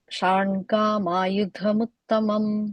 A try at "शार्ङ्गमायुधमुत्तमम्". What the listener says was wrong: I think there you're saying sharngam, you're adding an a there. Sharngam ayudham.